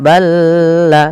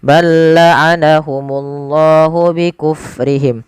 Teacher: huruf lam yang pertama dimasukkan ke huruf yang kedua tapi tidak ditahan, tidak balla tapi langsung saja. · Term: idgham mutamasilain